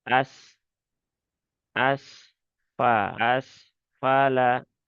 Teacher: Karena sifatnya rokhawah, maka ya alirkan saja.